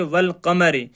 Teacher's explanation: جو الف ہے اس کو نہیں پڑھا جائے گا، صرف لام کو پڑھا جائے گا۔ لام کو پہلے والے حرف کے ساتھ ملا کر پڑھیں گے، الف کو چھوڑ دیں گے، جیسا کہ والقمر، کہ والقمر میں قاف حروف قمری ہے، اس لیے ہم نے لام کو پڑھا واو کے ساتھ ملا کر اور الف کو چھوڑ دیا۔